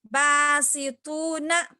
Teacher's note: دیکھیے با ہم کھینچ کے پڑھ رہے ہیں کیوں وہ تو الف سے پہلے زبر ہے، ٹھیک ہے، الف مدہ ہو گیا.